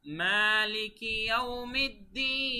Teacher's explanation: এখানে কিন্তু কোনো কঠিন উচ্চারণ নেই, শুধুমাত্র টানগুলো আপনাদের খেয়াল রাখতে হবে। মালিকি, এই যে মা, এখানে 1 আলিফ টান, তারপরে ইয়াউমিদ্দিন শেষে হচ্ছে 3 আলিফ।